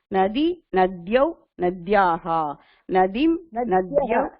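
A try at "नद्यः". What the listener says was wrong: நத்யான் இல்ல, ஆக்கி மாத்திரா இல்ல.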